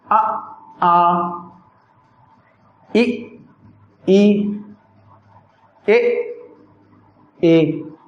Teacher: अवृत्ताकार में होते हैं ओष्ठ वृत्ताकार नहीं बनते।